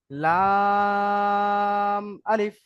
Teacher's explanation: লামে 3 আলিফ টান, আলিফে কোনো টান নেই।